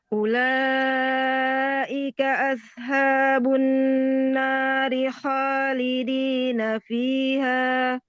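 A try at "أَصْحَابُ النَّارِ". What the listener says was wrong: Ya, pakai sod mi ashabu. Jangan pakai sin, pakai sod. Asha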